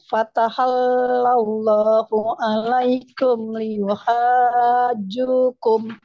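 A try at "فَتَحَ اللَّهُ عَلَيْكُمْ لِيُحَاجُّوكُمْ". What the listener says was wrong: Nah, di sini kurang panjang Bu, ya. Dan juga di sini hati-hati. Tidak fataha, fatahallah, langsung fataha. Fatahallahu alaikum liyuhajjukum. Hanya lebih panjang 6 harakat.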